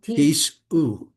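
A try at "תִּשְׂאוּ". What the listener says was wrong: Don't go tisu. You're slurring the word and it'll be something different.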